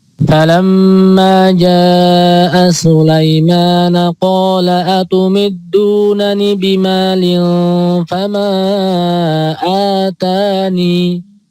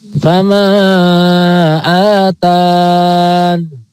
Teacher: Dalam riwayat Hafs itu ada dua cara. Bila waqaf pada lafaz fama atani itu bisa dengan menetapkan ya atau membuang ya